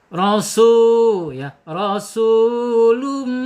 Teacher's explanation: Jaakum rasulum ya ro ya dibaca tafhim tebal ya ro secara makhraj harus dibaca tahim ro gitu ya. rasu mad thobbi'i panjangnya dua harakat satu alif dua-dua ketukan